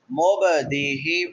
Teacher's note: قاف قا با جیم دال، جن کا مجموعہ قطب جدن ہے، مبدیہ با کو ہلا کے پڑھیں گے ، مبدیہ دال کے بعد یا مدہ ہے، یا ساکن ما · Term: حروف قلقلہ